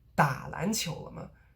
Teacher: So you're emphasizing the first part of the word, the verb, but not the second part, the object.